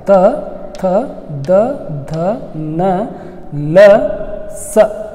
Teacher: ದಂತ್ಯ ಅಕ್ಷರಗಳು ಅಂತಂದರೆ ಈ ದಂತದ ಸಹಾಯದಿಂದ ಹಲ್ಲುಗಳ ಸಹಾಯದಿಂದ ಉಚ್ಚರಿಸಲ್ಪಡುವಂಥ ಅಕ್ಷರಗಳಿಗೆ ದಂತ್ಯ ಅಕ್ಷರಗಳಂತೇಳಿ ಕರಿತೀವಿ